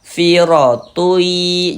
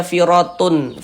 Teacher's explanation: Bunyi tanwinnya dimasukkan ke huruf ya. Melebur ke huruf ya. Kita baca firui jangan dibaca firatun.